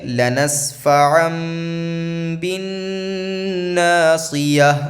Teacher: نون یہاں پہ ہے نہیں، نون کی آواز ہے، تو نون کی آواز یہاں میم سے بدل جائے گی